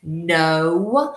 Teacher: it's an open syllable that means it goes on and on there is no consonant sound to stop it